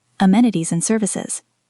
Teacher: The word and in amenities and services is reduced and pronounced un. It connects to the previous word, so the phrase may sound like amenities and services.